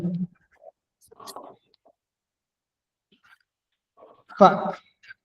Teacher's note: tout se fait en bas, au niveau de la glotte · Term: son glottal